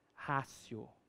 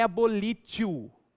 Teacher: E não ratio? Porque esse T, diante de um ditongo, ele tem som de C.